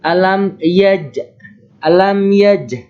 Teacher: Nah, ini hukum tajwidnya adalah qalqalah sugro. Karena huruf qalqalah jim berharokat sukun dan posisinya di tengah kalimat. Cara membacanya dipantulkan secara ringan.